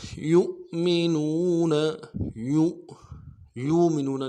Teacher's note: کے اوپر حمزہ ہے اس کو کہتے ہیں حمزہ بشکل واو، یہ حمزہ واو کی شکل کا ہے، اس لیے یہاں پہ جھٹکا دیں گے